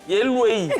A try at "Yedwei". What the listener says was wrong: Il y a un D dedans. Il y a un D. Yedoué, non?